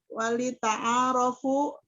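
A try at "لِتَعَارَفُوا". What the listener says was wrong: Jangan ditambah-tambah, enggak ada wawu. Bukan wali ta'arofu. Jangan nambah-nambahin.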